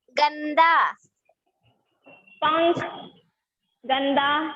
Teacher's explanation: अनुस्वार में इसका उच्चारण नाक की सहायता से होता है।